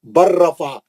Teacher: اب لام نہیں پڑھیں گے، آپ را میں چلے جائیں گے سیدھا، کیونکہ لام اور را کا مخرج قریب ہے. لام ساکن کا را مشدد میں ادغام میں متقاربین ہو گیا.